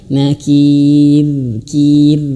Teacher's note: rnya tipis jangan sampai tebal